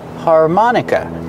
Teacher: the last syllable is the short sound uh like cup and up